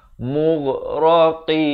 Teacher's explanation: Qaf pula makhrajnya di pangkal lidah.